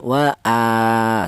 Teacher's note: Di mana huruf hamzah ini berharokat berdiri. Ini juga dibaca panjang, yaitu panjangnya satu alif atau dua harokat atau dua ketukan